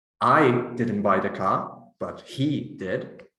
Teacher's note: the stress on I and he changes the meaning of the utterance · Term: nuclear stress